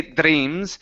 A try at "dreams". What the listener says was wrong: Ooh, almost. Don't roll the R.